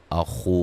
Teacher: خا کو موٹا ادا کریں گے، و مدہ ہے